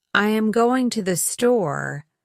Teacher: the stressed words are going and store, while I, am, and to are reduced and spoken quickly. Mimic this rhythm by stressing the right words and reducing the function words, just as the native speaker does.